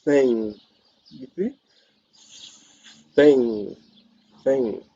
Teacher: t h this one is boys interdenter this means that the the tongue is placed between the upper and the lower set of teeth · it is fricative because the airflow is pushing through a narrow space. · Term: interdental